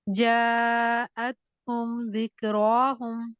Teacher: हुम की आवाज जरा भी नहीं लंबी करनी।